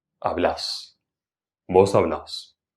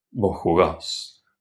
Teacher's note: Finalmente, agrega el acento en la última sílaba.